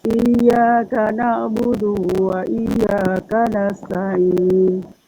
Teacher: jangan ada panjang antara Dal dengan wau